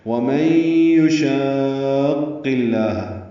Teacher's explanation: اب قاف کے اوپر پیش ہے، پر بھی پڑھیں گے اور اس کو لام اسم جلالہ سے ملائیں گے، قاف بھی پر ہوگا، لام اسم جلالہ بھی پر ہوگا، بیچ میں واو الف الف لام نہیں پڑھیں گے، ادغام شمسی ہوگا اللہ میں۔